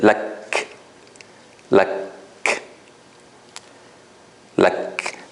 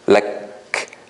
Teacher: I block the air and then release a tiny bit of air after it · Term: hams